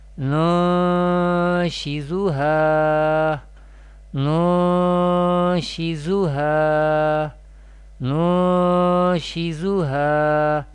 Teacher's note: We perform ikfa here with gunna. Gunna means taking the sound into nose. The length of gunna should be one alif, should be equal to one alif.